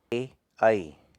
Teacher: तालु की तरफ जीभ शिफ्ट होती है, पूरा टच नहीं करती तालु को, बट तालु की तरफ फोल्ड होती है। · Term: कंठ तालव्य